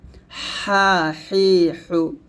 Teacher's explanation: চাপ দিব চিকন করে বলব গলার মাঝখান থেকে